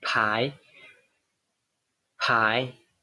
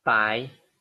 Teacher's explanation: The only difference is the aspiration of the P sound.